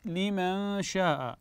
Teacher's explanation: نون ساكنه اتى بعدها حرف الشين فالحكم هنا احسنتم اخفاء